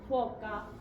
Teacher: La F es labio dental.